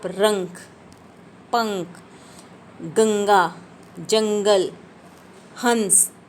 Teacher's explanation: इन का उच्चारण करते समय वायु जो है केवल नाक से निकलती है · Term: अनुस्वार